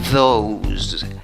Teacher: La O no se pronuncia como una O, sino como una O con un sombrerito, que equivale a ¿qué? A OW, más o menos. Y acaba en Z la pronunciación, no acaba en S.